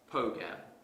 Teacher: i pronounce this word as pogam that's incorrect because the r sound is missing